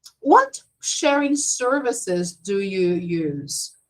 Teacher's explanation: Services starts going down, but sharing is the most important.